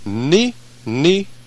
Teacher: the tip of the tongue will come up to pronounce the N and then go right back down behind the bottom teeth